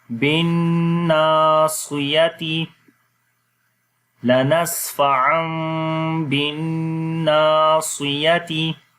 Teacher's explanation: با آ جائے تو وہاں پر اقلاب ہوتا ہے، یعنی کہ نون کی آواز کو میم میں بدل دیتے ہیں، اور پھر میم کی آواز کو چھپا کر پڑھتے ہیں، اور ہونٹ آپس میں ملیں گے لیکن نرمی کے ساتھ ، سختی کے ساتھ اس کی آواز کو نہیں پڑھیں گے، · یا زبر یا، بن ناصیہ، تا زیر تی، بن ناصیتی، تو بن کے اوپر بھی غنہ کریں گے اور پھر نون کو لمبا کریں گے الف مدہ کی وجہ سے